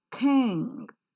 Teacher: K-I-N-G is pronounced as king, with a slight h sound that you could see in the pronunciation of k sound.